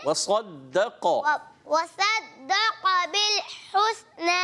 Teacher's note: قاف کو موٹا بھی کرنا ہے، قاف بھی موٹا رہے گا